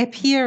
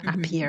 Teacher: usually the words that start with an a in english are pronounced like this uh it's a schwa sound